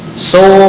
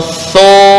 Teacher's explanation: Su agak terbuka. Tapi kalau thu itu tertutup. Ya, karena menjepit dengan gigi atas.